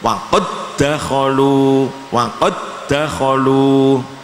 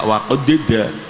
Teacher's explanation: Jadi di situ ada huruf sukun bertemu dal, sukun bertemu dal harus diidghamkan. Kalau idgham qalqalah hamas itu hilang. Waqad tidak waqadida, waqad dakhalu.